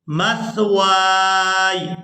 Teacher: वाव को हम अलिफ मद्दा की वजह से खींच कर अदा करेंगे और खींचते हुए याए साकिन के साथ मिलाएंगे वाव अलिफ या ज़बर वाय मस्वाय, मीम सा ज़बर मस, वाव अलिफ या ज़बर वाय वक़ف کرتے ہوئے ہم یا کی آواز کو بھی واضح طور پر ادا کریں گے، مثوائے۔